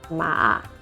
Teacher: the dipping tone, ma, which is downwards and upwards, you raise the voice